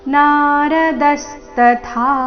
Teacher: ಕೊನೆಗೆ ಥ ಮಹಾಪ್ರಾಣ ದೀರ್ಘ